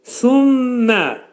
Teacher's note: Gördüyünüz kimi mim burunda şiddətli şəkildə sıxılacaq. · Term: idğam mə'al-gunnədir